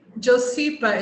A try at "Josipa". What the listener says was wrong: Josipa. the J is like a Y, so it's Josipa.